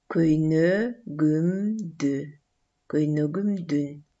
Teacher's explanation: Каткалаң үнсүзү эки үндүүнүн ортосунда жумшарып кетет.